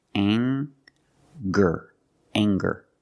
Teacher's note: We have the nasal sound plus the hard G, the G sound.